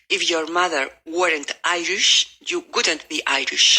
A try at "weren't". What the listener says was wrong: I'll try to make one syllable of weren't. Weren't. If your mother weren't. Weren't. Now, how do you say burn in the past tense with a T? Yeah, burnt. Weren't.